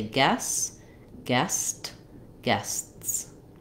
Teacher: it ends with s TS and we need to make all three sounds